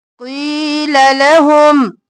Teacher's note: कौफ मोटा या मद्दा है खींचेंगे क़ी और ला जल्दी से लहुम मीम पर इजहार